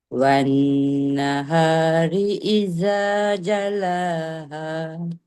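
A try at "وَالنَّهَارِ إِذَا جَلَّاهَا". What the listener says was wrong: Dekat lam ada sabdu. Tekan sikit.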